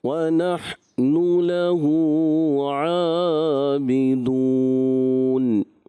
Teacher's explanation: تو ہا میں قلقلہ نہیں کریں گے